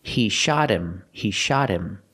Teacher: The T in shot is between vowels, so it changes to a fast D.